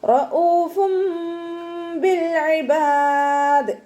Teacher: നൂനിൻ്റെ sound അവിടെ കേൾക്കുകയില്ല. തെൻവീനിലുള്ള നൂനിൻ്റെ sound കേൾക്കുകയില്ല. മീമിൻ്റെ സൗണ്ടാക്കി മാറ്റി മറിക്കും ചെയ്യുക.